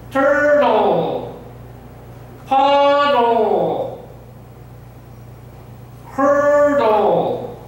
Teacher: Como que pronuncian la L, pero jalan la lengua hacia adentro.